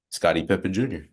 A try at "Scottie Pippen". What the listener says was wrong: Every time you say like Scottie Pippen or Scottie Pippen Jr., the first time you say it, you always say Pimpin. Scottie Pimpin.